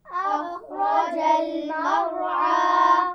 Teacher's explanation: اخرج خا اور را دونوں موٹے پڑھے جائیں گے